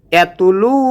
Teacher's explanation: লু একাল টান হবে পেশের বাম পাশে জজমেলা ওয়াও আসার কারণে